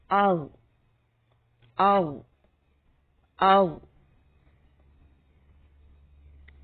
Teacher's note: اس میں زبان کا پچھلا حصہ بلند ہوتا ہے اوپر تالو کی طرف اور اس سے موٹی آواز پیدا ہوتی ہے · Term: حرف حافیہ